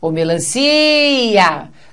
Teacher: Ocorreu um hiato. E a sílaba tônica é o si.